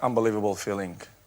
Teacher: If you listen carefully, you're going to realize he said filling. He pronounced the G at the end of the word.